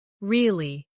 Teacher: Say really with a rising tone to show surprise. Now say really with a falling tone to show you don't believe someone.